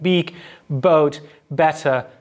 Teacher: we find an unaspirated p at the start of words that are spelled with a b · there's no vocal fold activity in the b that occurs at the start of words like beak, boat, and better